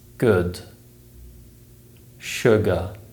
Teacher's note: the uh sound is produced by raising the center of the tongue slightly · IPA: /ʊ/